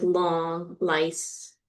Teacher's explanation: the tongue tip is making its closure at the alveolar ridge, and the air is moving laterally. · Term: lateral sound